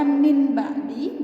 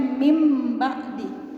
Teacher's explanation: Maka nunnya tidak lagi menjadi nun mati, tapi berubah menjadi mim mati.